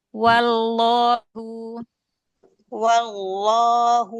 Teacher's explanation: lamnya begitu fathah tarik angkat pangkal lidahnya biar dia tebal